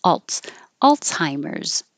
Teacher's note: it looks like a z but we do change it to a TS